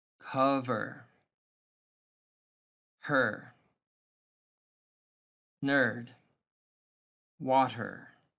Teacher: the vowel sound actually is smaller than the R. This is called R-controlled words. All the vowels are weaker.